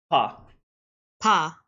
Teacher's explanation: I'm just going to say that the PHA is aspirated.